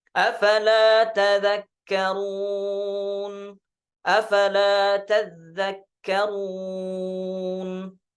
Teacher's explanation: Kemudian di ayat yang ke-30, tadzakkarun bitasydididz dzal. Jadi tadzakkarun di riwayat Syu'bah dengan mentasydidkan huruf dzal.